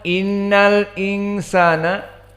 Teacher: Karena hamzatul wasl dia jika bersambung dengan huruf sebelumnya hilang. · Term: hamzah al-wasl saqatat